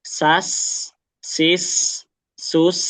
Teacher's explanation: Sin itu dia masuk kategori yang mengalir sempurna. Jadi agak lama durasinya. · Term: sin yang sukun